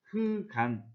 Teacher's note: 리을 기역 중에 리을을 탈락시켜 흑간 이렇게 발음을 합니다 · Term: 자음군 단순화 현상